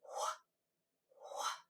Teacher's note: Notice I'm whispering this sound.